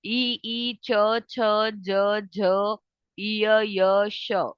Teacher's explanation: जो आपकी टंग है ना, उसके साइड साइड का पोर्शन आपके अपर पैलेट, अपर जो हार्ड पैलेट है उसकी साइड साइड पे टच हो रहा है कि नहीं? तो it is consider as hard palate, ठीक है, तालु।